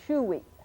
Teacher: that glottal stop at the end is a little catch in your throat